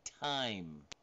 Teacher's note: Voiceless alveolar stop, and that's like time.